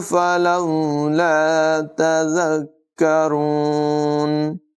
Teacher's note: کاف کو زال کے ساتھ ملا کر ذرا رک کر ادائیگی کریں گے. را کی آواز پر ہوگی، کاف کو باریک پڑھیں گے.